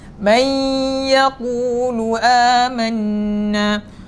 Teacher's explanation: Idgham memasukkan sebutan ataupun suara huruf nun ke dalam huruf ya ma'al ghunnah berserta dengung. Berikan dia dengung. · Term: idgham ma'al ghunnah